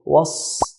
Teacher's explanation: Sad is from the heavy letters, and it's got a shadda. So hold. Was, there's a hissing sound. Was, sad, fatha, sa.